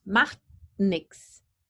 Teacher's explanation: the tip of the tongue can touch the alveolar Ridge and block the air stream and then meld into the next sound without releasing the air